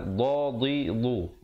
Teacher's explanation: makhraj dad di tepi lidah